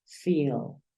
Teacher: le das un poquito más de espacio a ese sonido I y dices feel